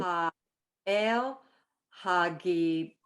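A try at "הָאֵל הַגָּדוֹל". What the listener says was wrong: No, look at the vowel.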